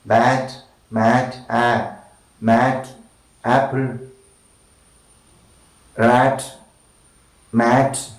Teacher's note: front sound, between open and half open position, unrounded and short sound. Alright, spread lips.